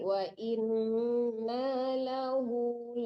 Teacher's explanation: dua harakat aja itu namanya mad tabii